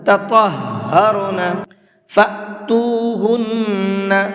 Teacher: تَطَهَّرْنَ فَأْتُوهُنَّ، یہاں یہ حمزہ ساکن ہے اور حمزہ ساکن کو جھٹکے سے پڑھا جاتا ہے، اس لیے میں نے اس کو جھٹکے کے ساتھ میں پڑھا ہے۔